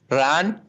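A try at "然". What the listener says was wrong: जी, रन, शाबाश।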